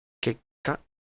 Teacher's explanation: you can hear that there's a glottal stop before the ka